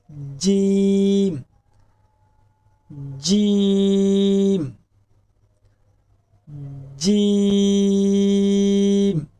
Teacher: زبان کا بیچ جب تالو کے بیچ سے لگے تو جیم ادا ہوتا ہے۔